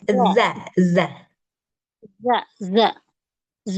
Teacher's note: lihat lidah saya keluar ke depan gigi seri kita yang dua